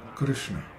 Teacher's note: It's Krishna, Krishna, K-R-S-N-A, Krishna. And when pronouncing the R-S-N in the middle of Krishna, the tongue is held back and pressed against the inside of the lower teeth